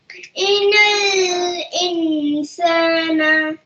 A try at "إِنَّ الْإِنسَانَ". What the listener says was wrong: نون is مشدد, so you have to make غنة on nun. नहीं इन पे आप होल्ड करके रखें إن الإنسان